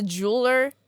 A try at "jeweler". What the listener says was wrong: Jeweler. 2 syllables. jeweler.